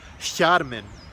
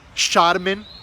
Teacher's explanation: quando os homens de Gondor falavam Quenya, eles costumavam transformar esse sonzinho mais sutil num equivalente ao SH do inglês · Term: sotaque de Gondor